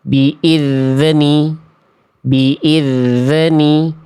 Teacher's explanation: Kesalahan yang seringki terjadi adalah zal sukunnya zal sukunnya memantul.